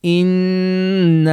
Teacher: Instead, you should say, inna. So you stop the Ghunnah on the noon. As soon as you leave the noon, you don't extend or exaggerate the Ghunnah into the alif, which is a very, very common mistake. · Now, this one can be tricky for 2 reasons. One, there is a alif with a fatha, so it makes it a long beat. And also, some people will extend the Ghunnah from the noon into the alif as well, the mad alif.